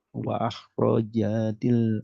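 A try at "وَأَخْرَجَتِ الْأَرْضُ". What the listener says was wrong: ja-nya hati-hati kepanjangan. Wa akhrajatil ardu.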